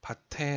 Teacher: 받침이 다음 음절의 초성으로 넘어가죠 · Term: 연음